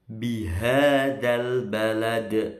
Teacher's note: Uqsimu ya, bihadzal balad, bi bukan bi, bihadzal balad. Nah, baladi karena diberhentikan jadi balad, ini qalqalah kubro, mantul karena berhenti atau di akhir ayat